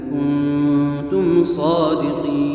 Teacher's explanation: ان کنتم میں یہاں دونوں جگہ پر اخفاء ہے، یعنی غنہ ہوگا۔ کنتم میں بھی میم ساکن ہے، لیکن میم ساکن کے بعد صاد آیا ہے تو یہ اظہار ہوگا، میم کا اظہار ہوگا، یعنی غنہ نہیں کریں گے۔